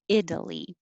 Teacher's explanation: That T will change to a D most of the time for most people.